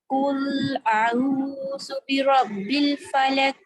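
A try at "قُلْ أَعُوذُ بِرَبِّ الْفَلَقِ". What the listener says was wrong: دیکھیں آپ نے ایک تو اس میں تھوڑی سی ظاہری غلطی بھی کر دیا, اور فلق ہم نے کلکلا پڑھا ہے نا, تو آپ اس پہ وقت کر رہی ہیں تو آپ اس طرح کی آواز نہیں آئی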